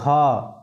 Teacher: घ का उच्चारण कहां से आ रहा है डायरेक्ट कंठ से